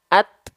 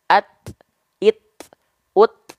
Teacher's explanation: huruf ta itu akan sangat terasa sifat sifat percikan nafasnya ketika dia dalam kondisi sukun